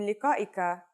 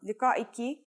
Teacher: When you change the last letter in liqa'ika, a, to an e sound, liqa'iki, you are actually changing the word you from the male to the female version.